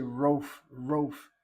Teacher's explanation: That medial vowel, that long vowel cholam, should be part of an open syllable. But when people say rof, rof, they're closing that first syllable. Furthermore, they don't bother to sound the aleph.